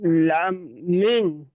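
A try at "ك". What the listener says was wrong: মিম কেন ওটা? দেখেন, ভালো ভালো করে অক্ষর চেনেন। ওটা মিম নয়, ওটা অন্য অক্ষর হবে, বলেন। আপনি অক্ষরগুলো ভালো করে চিনে বলবেন, আন্দাজে বলবেন না।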